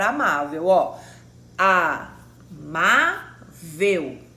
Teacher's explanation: são paroxítonas ou seja é a penúltima sílaba tônica